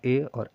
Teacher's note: यानी यह ऐसे वर्ण है जिसका उच्चारण स्थान दो-दो जगह है। जब हम लोग ए और ऐ को बोलते हैं तो कंठ और तालु दोनों का प्रयोग होता है। तो इसे हम लोग कंठ तालव्य वर्ण बोलते हैं।